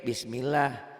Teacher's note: kalau lafaz Allahnya tipis nggak pakai W